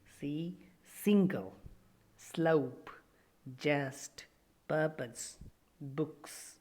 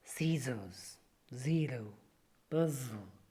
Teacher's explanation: The vocal cords do not vibrate for s sound but vibrate for z sound. For the example, if we take, see, single, slope, just, purpose, books, z sound is produced in scissors, zero, puzzle, okay? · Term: alveolar fricatives